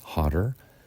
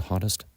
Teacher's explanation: And the comparative is hotter. In American English, we're going to pronounce this with a D, hotter. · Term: D sound